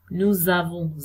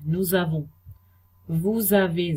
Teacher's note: s जो है consonant है, a जो है वो vowel है, तो ये z की तरह बोले जाएगा